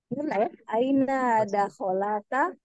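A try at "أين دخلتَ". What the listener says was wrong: Jadi mati sukun lamnya dah.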